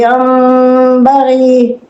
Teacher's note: نون ساکن ہے پھر با ہے، تو یہ نون بھی میم سے بدل دیں گے